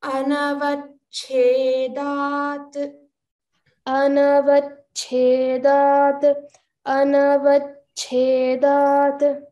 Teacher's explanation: try to focus on the cha and cha, both alpa prana and maha prana together. So focus there when we chant this.